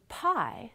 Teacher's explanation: the lips are closed for the bilabial stop but because p is a voiceless stop the vocal folds are not vibrating we open the lips to release the stop but 30 or